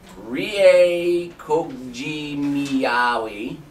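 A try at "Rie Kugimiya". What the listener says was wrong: Wow, you added an extra syllable after you got it right.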